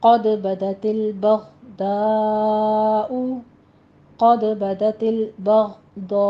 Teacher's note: قد میں قاف کو پر پڑھیں گے، دال کے اوپر قلقلہ کرنا ہے